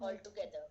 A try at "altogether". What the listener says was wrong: Yes, correct. Well done.